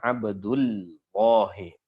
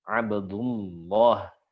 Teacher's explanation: Abdullah ini sebelumnya berharokat dhamma, harokat atas. Maka langsung ditebalkan. Maka keliru jika ada yang menganggap bahwasanya lam yang pertama, kan lamnya kan bertasdid nih. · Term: langsung tebal